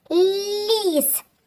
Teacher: Так, звук ль. Він який? М'який приголосний.